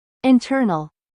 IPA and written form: ɪnˈtɜːrnəl (INTERNAL)